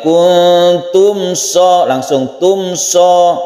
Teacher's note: In kuntum bacaan ikhfa hakiki, kuntum ini juga ikhfa, kita panjangkan, kita dengungkan. Kemudian mem bertemu dengan shad, ini izhar syafawi, tidak dengung